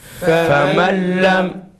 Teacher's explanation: Peki tecvidli femellem, femellem idgam ma'al gunne ile bila gunne arasında gunne farkı var değil. Bila gunne'de gunne olmadığına göre yağdaki gibi uzatmıyoruz